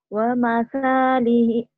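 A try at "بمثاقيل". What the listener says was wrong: mana ada wanya? Mana ada wanya dari mana waknya? Kok wa? Bimasalihi, kemudian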